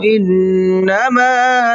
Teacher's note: نون کے اوپر تشدید ہے تو نون میں غنہ کر کے پڑھیں گے